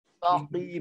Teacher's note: Dia kena tebalkan. Walaupun baris tu qaf tu baris bawah, kena tebal. · Jadi kalau kita tak tebalkan qaf terus jadi kaf. Ataupun kaf ini kalau kita tak tipis terus jadi qaf.